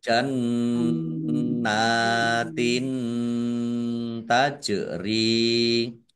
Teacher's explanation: Jim sukun bacaan kolkolah dibaca memantul ditampakkan pantulannya. · Kasroh tanwin bertemu dengan huruf ta bacaan ikhfa dibaca samar-samar